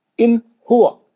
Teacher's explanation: نون کو چھوٹا پڑھنا، نون کو پورا صحیح پڑھنا، اس کی ادائیگی صحیح ہو جانا، اس کے حرف کی، لمبا نہیں ہونا، کھینچنے نہیں جانا، غنہ نہیں کرنا اس پہ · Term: اظہار